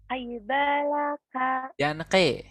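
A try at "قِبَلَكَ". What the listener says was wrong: Jangan ke. Qi. Qibalaka.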